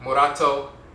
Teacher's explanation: The rolling R, ra, just one tap, murato. Instead of murato, but murato, the tongue taps the roof of the mouth once.